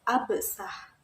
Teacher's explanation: bunyi yang sama-sama berupa bunyi geser kemudian diubah Salah satunya yaitu bunyi F diubah menjadi B yang merupakan bunyi bilabial sehingga menjadi kata absah